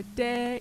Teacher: make the change to the vowel as immediate as you can so that there's no extra glide sound in between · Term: two separate vowels